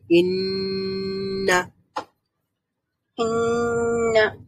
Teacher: নুন উচ্চারণ করার সময় যেই মানে আমাদের অর্গানস গুলো লেগেছিল, এখনো সেই অর্গানস গুলোর দরকার হবে। জিহ্বার অগ্রভাগ সামনের ওই যে দাঁতের মাড়ির সঙ্গে বা গোড়ার সঙ্গে লাগাতে হবে। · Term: গুন্না